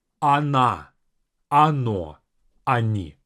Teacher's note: the first O will sound as A, even though it's spelled as O.